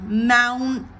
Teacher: The first syllable is stressed because it's a noun, mountain. Catch the roof of the tongue, NT, the T gets raised to the amount, and then you stay up there, mountain.